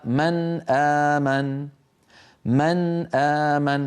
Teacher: مع الهمزه من اقصى الحلق كقوله تعالى من امن من امن فنون ساكنه من طرف اللسان والهمزه بعدها من اقصى الحلق فهما حرفان متباعدان